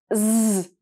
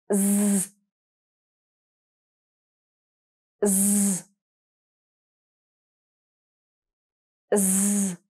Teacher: You are going to use your voice and feel a vibration in your throat. You're going to put your tongue against your bottom teeth and you're going to make it vibrate. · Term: z sound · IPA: /z/